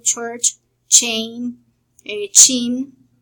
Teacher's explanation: Then we have the voiceless postalveolar affricate called ch. The sound is ch.